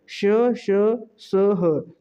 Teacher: जब आप इनका उच्चारण करते हो तो जो हवा है वो मुंह से टकराती है, रगड़ खाती है और गर्मी उत्पन्न करती है। तो इस टाइप के व्यंजन को हम उष्म व्यंजन कहते हैं।